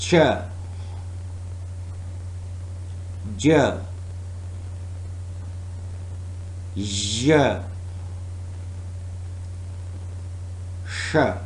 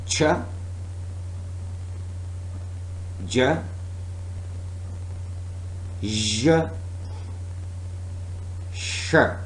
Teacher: The articulators are hard palate, of course, the part of alveolar ridge, and tip, blade, and front of tongue. You will feel how your tongue is moving towards that area when you produce these sounds. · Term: platealveolar